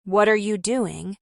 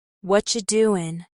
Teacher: The T in what blends into the R, and doing loses its G at the end